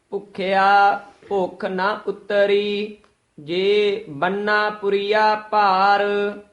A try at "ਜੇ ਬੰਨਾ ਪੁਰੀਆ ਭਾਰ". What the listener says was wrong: ਜੇ, ਇੱਥੇ ਯਮਕ। ਬੰਨਾ ਪੁਰੀਆ ਭਾਰ, ਇਹ ਬੰਨਾ ਪਦ ਜਿਹੜਾ ਹੈ ਭਾਰਾ ਉਚਾਰਨ ਕਰਨਾ, ਬੰਨਾ ਨਹੀਂ ਕਹਿਣਾ ਹੈ। ਜਿਸ ਤਰ੍ਹਾਂ ਮਹਾਰਾਜ ਸਾਹਿਬ ਦੇ ਬਚਨ ਹਨ, ਪਰਮੇਸ਼ਰ ਦਿੱਤਾ ਬੰਨਾ, ਉੱਥੇ ਬੰਨਾ ਹੈ, ਬੰਨਾ ਦਾ ਅਰਥ ਹੈ ਪੁੱਤਰ, ਇੱਥੇ ਬੰਨਣ ਦਾ ਵਾਚਕ ਹੈ। ਥੋੜਾ ਜਿਹਾ ਭਾਰਾ ਬੋਲਣਾ ਹੈ।